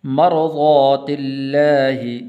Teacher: لفظ اللہ کو باریک کر کے پڑھنا ہے کیونکہ اس سے پہلے زیر ہے